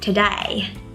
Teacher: with a really strong Australian accent it would be pronounced as today right with like to die essentially